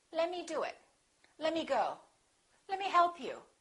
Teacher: Let me often becomes lemme. The T disappears.